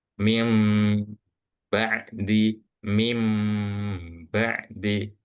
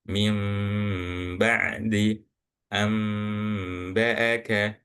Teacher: Iklab itu secara bahasa merubah, membalik, ya, yang seharusnya ba, tapi dengungnya jadinya seperti suara mim